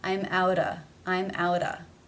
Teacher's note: the sound comes between two vowel sounds it is then going to be pronounced as the flap tap t or in other words the d sounds i'm outta i'm outta